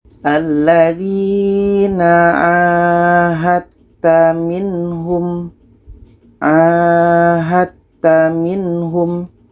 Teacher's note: ada da mati bertemu ta. Ini idgham mutajanisan. Jadi dal ini tidak kita baca lagi. Jadi di sini tidak ada qalqalah.